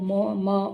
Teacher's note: म का म वर्ण का उच्चारण स्थान क्या है वो म म ओष्ठ है